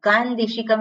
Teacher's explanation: અનુસ્વાર પછી દકાર આવે છે એટલે અનુસ્વારનો નકાર થઈ ગયો